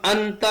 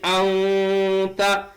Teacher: نون کی آواز کو ناک کے بانسے میں چھپا کر پڑھیں گے